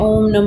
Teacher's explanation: विसर्ग। इसका उच्चारण ह की तरह होता है।